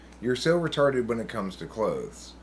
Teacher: You're so retarded when it comes to clothes is a naturally occurring iambic pentameter sentence.